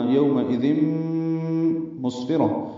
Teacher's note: طریقے سے پڑھیں گے، ذال نرمی سے پڑھا جائے گا، اور تنوین کے بعد میم آنے کی وجہ سے ادغام ہوا ہے، یہ ادغام ناقص ہے، مع الغنہ